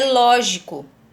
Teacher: E em lógico, é a primeira sílaba que é tônica. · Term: sílaba tônica